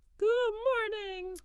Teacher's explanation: Even though the sound isn't fully released, your mouth and tongue have sort of prepared for it. >> The tongue is in position for the D and that subtly changes the vowel sound just before the M. A true go morning would sound smoother.